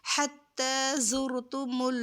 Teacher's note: مل، حتی زرتم زرتم، زا کو سختی سے ادا کریں گے، اور جو را ساکن اور سے پہلے پیش ہو تو اس را کو بھی ہم پر کر کے پڑھتے ہیں ، حتی زرتم میم زبر ما، زرتم